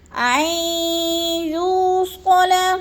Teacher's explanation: یو پہ وہ مدہ ہے، وہ مدہ کو 1 الف 2 حرکات کے برابر ہم نے لمبا کر کے پڑھنا ہے